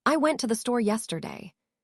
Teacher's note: The stress falls on store because that's the most important information